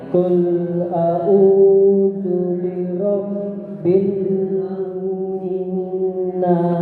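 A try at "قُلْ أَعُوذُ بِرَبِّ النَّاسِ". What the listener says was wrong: Kelebihan pula. Kelebihan pula setengah. 3. Qul a'udzu bi rabbin nas.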